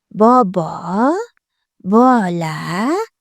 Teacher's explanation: B tovushini hosil qilishda lablarimiz ishtirok etdi. Demak, hosil boʻlish oʻrniga koʻra lab undoshi, hosil boʻlish usuliga koʻra portlovchi undosh ovoz va shovinning ishtirokiga koʻra jarangli.